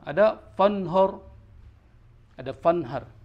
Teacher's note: Fanhar itu ro-nya ro tafkhim, dia bacanya harus tebal.